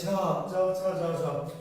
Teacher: ঠোঁট কিন্তু ফাঁকা আছে, ঝ ঠোঁটে না, জিহ্বাটা কি কোথায় লাগছে? তালুতে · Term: তালব্য বর্ণ